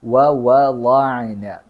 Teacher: രണ്ട് വാവുണ്ട്, അത് ചുണ്ട് കൂർപ്പിച്ചിട്ടാണ് പറയേണ്ടത്. വവളഅന.